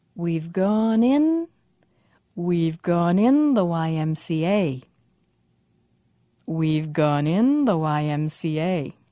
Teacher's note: the most stress on the last in the series of letters